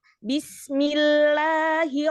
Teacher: Itmamul harokat, turunkan ketika kasroh. Menjadi I, bukan E.